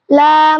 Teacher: জিহ্বার আগার কিনারা সামনের উপরে দাঁতের মাড়ির সঙ্গে লাগাইয়া লাম উচ্চারিত হয়